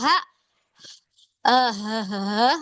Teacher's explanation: itu keluarnya ha itu keluar dari tenggorokan bawah